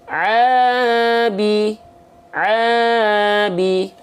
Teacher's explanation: dia harus dibaca dengan kadar panjang dua harakat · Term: Mad thobii, mad tabi'i